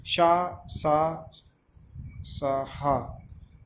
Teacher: ऊष्म से मतलब ऊष्मा, यानी कि मुख से जब बोलते हैं तो ऊष्मा निकलती है, तो वो ऊष्म व्यंजन